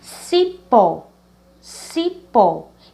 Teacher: a última sílaba, pó, ela é a mais forte. Por isso que nós chamamos ela de oxítona.